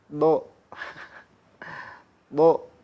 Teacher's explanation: Lidahnya diam, pangkal belakangnya naik.